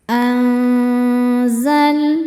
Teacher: Selanjutnya ada hukum ikhfa hakiki ausat karena nun sukun bertemu dengan huruf zai. Cara bacanya nun disamarkan ke zai disertai dengung. Dengung dan kesamarannya sama besar. Anzal lam sukun dinamakan dengan lam mutlak.